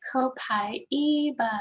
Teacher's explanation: eva it says the four syllables ko pi e ba and i put the stress on the third syllable